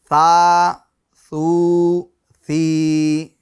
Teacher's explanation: ثا کا مخرج کیا ہے، ایک مرتبہ اور ہم دہرا دے رہے ہیں، زبان کا سرا اور اوپر کے دانتوں کے اندرونی کنارے سے ثا ادا ہوتا ہے